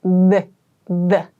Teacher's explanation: your tongue is between your teeth, and your vocal cords vibrate when you make this TH sound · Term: voiced TH sound